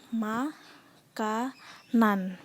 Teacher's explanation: pada katak makanan ada pengimbuhan sufiks-an pada kata dasar Makan disini fonem an pada kata makan berpindah ke suku kata nan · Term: pergeseran fonem